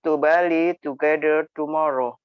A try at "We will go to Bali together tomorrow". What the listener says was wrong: Nah, ini masih ada T-nya.